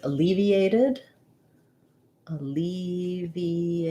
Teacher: a is going to say the uh sound it's unstressed because my main stress is on leave